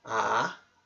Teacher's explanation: segundo tom é simbolizado como um sinal que sobe porque é exatamente isso que acontece é um tom que sobe